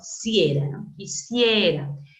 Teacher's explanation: Aquí encontramos una vocal cerrada I y una vocal abierta E y el acento recae en la abierta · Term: diptongo